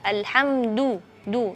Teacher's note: Jadi tidak ada angin ketika melafalkan huruf dal, karena huruf dal memiliki sifat jahar.